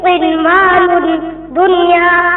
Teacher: اظہار مطلق جس کلمے میں نون ساکن کے بعد واو یا میں سے کوئی حرف آ جائے تو وہاں پر اظہار مطلق ہوگا اور نون ساکن یا تنوین جلد پڑھا جائے گا اور نون ساکن جلد پڑھا جائے گا نہ کھینچا جائے گا نہ غنہ ہوگا